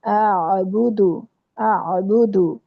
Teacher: تو آپ لوگوں کی جو آئین ہے نا ساکن آئین اس کو جھٹکا لگ رہا ہے تو جھٹکا نہیں لگانا یہاں پر کیونکہ حمزہ ساکن جو ہوتا ہے اس پہ جھٹکا لگتا ہے تو آئین پہ جھٹکا نہیں لگتا. لا اعبد آ کو سمپل پڑھنا ہے حمزہ ہے آگے آئین ہے تو اس کو وسط حلق سے ادا کرنا ہے